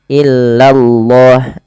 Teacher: Kemudian nih di lafal Allah bila didahului dengan fathah atau dhammah dia harus ditebalkan lafal Allahnya. Illallah, lanya tapi tipis, tidak boleh tebal